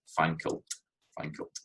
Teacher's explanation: So what's happening there is fankle, fankelt, it's taking the I form and putting it before the L, so it makes that merry a full syllable, and then the T goes onto the L, so fankelt, you've got that in there. So it rhymes with the word kilt, fankelt, fankelt, but it's an unstressed syllable again, so it's not a full rhyme.